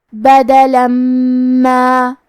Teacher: اگر ہم یہ کلمہ کو اگلی آیت کے ساتھ ملا کے پڑھے تو حرف المیم کلمت ما دوسری والی آیت میں حروف الادغام بغنہ میں سے ہے، اور ادغام کا معنی ہے حرف کو حرف میں داخل کرنا، تو ہم یہ تنوین کو میم میں ملا کے غنہ اور تشدید کے ساتھ یہ حکم کو ادا کریں گے۔